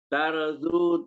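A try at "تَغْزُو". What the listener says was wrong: Bukan ra itu hurufnya ghair. Taghzu. Hurufnya diganti.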